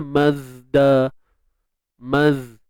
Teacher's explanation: Dan bersifat rakhawah. Huruf zai ni mengalir. Kan? Dan dia bunyi tajam di hujung tu, disebut sebagai safir. · makhraj bagi huruf zai ni, hujung lidah berada di belakang gigi sebelah bawah. Boleh. Jadi bunyinya mazda, maz.